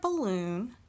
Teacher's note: In the word balloon, we are putting emphasis in the second syllable.